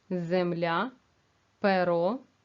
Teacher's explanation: ненаголошений звук е у вимові наближається до звука и